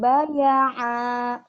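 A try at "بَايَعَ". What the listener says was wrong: Bukan. Salah. Yang ini. Gimana bacanya? Ujungnya doang yang panjang. Baya'a gitu ya. Baya'a tekan di ujungnya doang.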